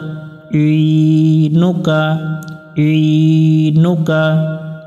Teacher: আইন অক্ষর আমরা একটু গলা চেপে উচ্চারণ করব